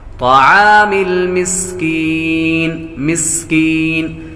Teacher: سین حروف صفیریہ میں سے ہے، اس لیے سیٹی کی آواز آئے گی۔ کاف بریک ہے، یا حروف مدہ میں سے ہے، اور آخر میں جب وقف ہوگا تو مد عارض بنے گی۔